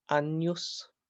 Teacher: The G and the N together make a ny sound